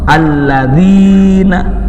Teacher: Yang ketiganya ya sukun sebelumnya kasrah, alladzina, dua ketukan, disebut mad asli.